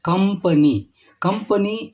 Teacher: ನಮ್ಮ ತುಟಿಗಳು ಒಂದಕ್ಕೊಂದು ಸೇರಿ ಮೂಗಿನ ಸಹಾಯದಿಂದ ಕಂಪನಿ ಎಂದು ನಾವು ಉಚ್ಚಾರ ಮಾಡುತ್ತೇವೆ